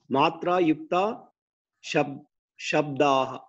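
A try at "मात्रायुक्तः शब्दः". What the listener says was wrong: Matra yuktaha. Visarga is there. Shabdaha. Matra yuktaha shabdaha. Read again.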